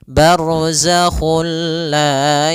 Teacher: kita memasukkannya secara utuh secara seluruhan kepada huruf lam sehingga tidak menyisahkan sedikit daripada bunyi huruf nunnya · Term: idgham bila ghunah